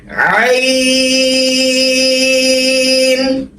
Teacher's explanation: তারপরে আসে আইন, 3 আলিফ টান, গলা চাপিয়ে হলকের মধ্যখান হতে